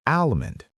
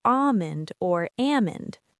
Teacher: And yes, once again, the L is silent.